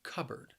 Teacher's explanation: the word has two syllables and the stress is on that first syllable